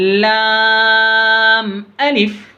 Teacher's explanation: लाम को ज़्यादा खींच रहे, अलिफ को जल्दी पढ़ रहे। ये लाम से हरफी है, इसको भी ज़्यादा खींचना है।